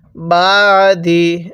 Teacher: আইনটা উচ্চারণের সময় গলার মধ্যে চাপ দিব